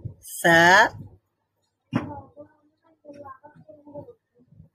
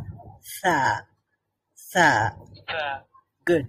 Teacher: জিহ্বার অগ্রভাগ উপরের দাঁতের অগ্রভাগের সাথে টাচ করবো টাচ করবো মিলাবো তারপরে আমরা উচ্চারণ করব মাশাল্লাহ আর জিমের উচ্চারণটা